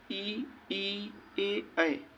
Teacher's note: जिन स्वरों के उच्चारण में जीभ का अग्र भाग कार्यरत हो तो उसे अग्र स्वर कहते हैं